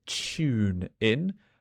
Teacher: In my British accent, this TU sounds a bit like a CH, so tune in, but it is TUNE, tune in.